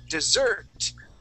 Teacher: the accent is at the end of the word the word is now dessert